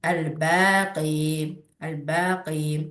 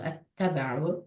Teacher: İzhar yəni zahirdə olan açıq aydın deməkdir. Yəni burada ləm açıq aydın şəkildə oxunur deyə, ona görə izhar qəməriyyə deyirlər. İdğam şəmsiyyədə isə ləm açıq aydın oxunmur deyə, ona görə idğam şəmsiyyə deyirlər.